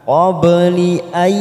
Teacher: ada huruf ba sukun warna biru, namanya qalqalah sugro. Kita pantulkan.